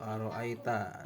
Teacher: mad layin karena ada tanda baca fathah bertemu dengan huruf ya mati, cara bacanya sekedar lunak dan lemas